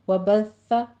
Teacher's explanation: آگے وبث میں سا کے اوپر آپ نے سیٹی کی آواز نہیں لانی ہے ، صرف تشدید ادا کرنی ہے، وبث، زبان کی نوک ثنایا